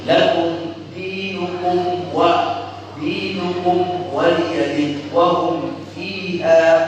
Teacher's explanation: Jadi mimnya harus idhar, nggak boleh mimnya dibaca ikhfa, nggak boleh mimnya dibaca idgham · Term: idhar syafawi